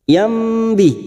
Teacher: fathah tanwin bertemu ba namanya bacaan iqlab siap membalik pada huruf mim. Yambi tetapi kita siap membunyikan huruf ba namanya bacaan iqlab.